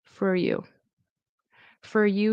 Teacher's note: This is reduced. So, it it turns into a fur sound.